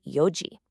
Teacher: For 4 o'clock, you actually do not say yonji. You drop the N completely and just say yoji